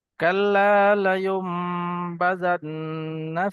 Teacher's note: এখানে নুনের ওপর তাসদিদ আসছে, ওয়াজিব গুন্না একালি পরিমাণ গুন্না করে পড়তে হবে।